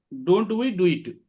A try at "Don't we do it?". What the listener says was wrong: Yes good, very good, good.